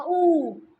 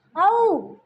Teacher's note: ये स्वर जीभ के पिछले हिस्से से उच्चारित होते हैं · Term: पश्च